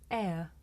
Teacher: this is a diphthong a double vowel sound the shape the mouth makes changes from the beginning of the sound to the end it's pronounced air did you notice how my mouth changed from